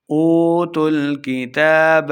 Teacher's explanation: واو مدہ ہو رہا ہے، 2 حرکات لمبا کر کے پڑھیں گے. کتاب تا کے اوپر کھڑی حرکات ہے، اس لیے 2 حرکات لمبا کرنا ہے.